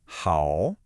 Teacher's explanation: you dip your voice down low, and then you rise back up again. It's kind of like a scoop.